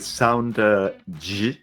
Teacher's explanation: This consonant is usually described as a palato-alveolar fricative sound, and that means that the point of articulation of this one is slightly behind the one of the sound S, okay? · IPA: /ʒ/